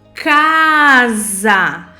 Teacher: o S tem o som do Z, mas na grafia ele é escrito com a letrinha S